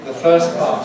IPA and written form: ðə ˈfɜːs ˈpɑːt (the first part)